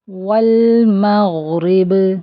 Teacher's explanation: غین heavy حرف ہے، heavy letter ہے، اس کو موٹا کر کے پڑھیں گے اور اس کی آواز بھی چلتی رہے گی ، اس کو ہم جلدی نہیں پڑھیں گے، غین میں یہ